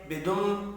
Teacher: میم مشدد پر غنہ کر رہے ہیں۔